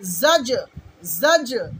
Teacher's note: অনেকে জাজ বলে ফেলে, অনেকে জাজ বলে ফেলে। আসলে জাজ, জা তারপরে জিম, জিম কলকলা করতে হবে